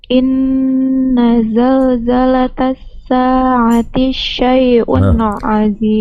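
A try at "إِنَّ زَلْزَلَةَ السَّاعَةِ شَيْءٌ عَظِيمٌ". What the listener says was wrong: T-nya jangan disambung sama shin. Inna zalzalatas sa'ati syai'un azim.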